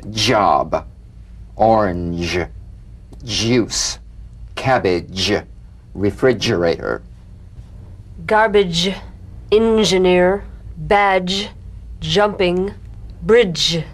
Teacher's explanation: It's a combination of the D drum beat and the ZH.